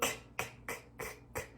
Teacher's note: You want a soft release on that k. So touch the back of the tongue on the soft palate and then softly k, k, k, k, k. Very softly release that k. We don't want a hard k because the ch comes next, and that's where we get most of the air release.